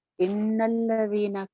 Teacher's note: नून शद के ऊपर एक अलिफ के बराबर गुन्ना हो गया , इन्नल्लज़ीना कफरू, कफ़रू रा मोटी है, कफ़रू सवाउन ये भी